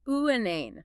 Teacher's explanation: We stress the second syllable, uanane. The first and third syllables reduced to the schwa.